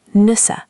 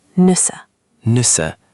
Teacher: It's like the U in moon, but with your lips more rounded. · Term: U sound